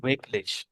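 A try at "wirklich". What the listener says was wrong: ভিকলিশ। কারণ ডাব্লিউ কে ভে উচ্চারণ করি। ভিকলিশ, ভিকলিশ ফুসবল।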